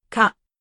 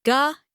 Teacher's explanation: The sound shifts from light K to voiced G.